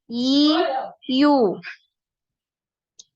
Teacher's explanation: ya tidak punya aliran nafas tapi punya aliran suara